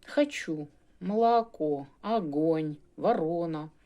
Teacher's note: вони акають тобто заміняють ненаголошені о на а хочу молоко огонь ворона голосні в їхній вимові зазнають сильної редукції